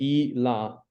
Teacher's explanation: You only get I, la, he will wait, because the last a at the end sometimes gets elided. So I, la, without the a.